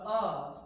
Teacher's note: ये निकल रहा है मध्य भाग से, जीभा के मध्य भाग से निकल रहा है। तो हम कहते हैं ये कौन सा स्वर है, ये मध्य स्वर है, जीभ के आधार पर मध्य स्वर है।